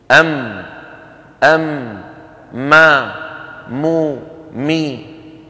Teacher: بانطباق الشفتين ويصاحب ذلك غنة من الخيشوم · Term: الميم